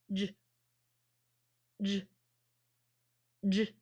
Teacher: it's a voiced fat puff because you're saying J and it's voiced and vibrating